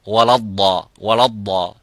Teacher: The waw is empty mouth, as we can see here. The waw is an empty mouth. The lam is an empty mouth. The only thing is the dad is a full mouth. Again comes back into the lam, which is empty mouth.